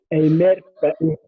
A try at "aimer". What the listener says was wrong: A may, because R is silent and is pronounced, because I told you when letter E is is followed by letter R or letter Z or letter T, it is pronounced. Okay, so we say a may, and the next one,